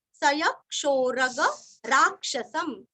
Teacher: सय क्षोरग राक्षसम सय य के ऊपर आघात सय क्षोरग राक्षसम यहाँ पे रा के ऊपर भी आघात है और लास्ट में आधा म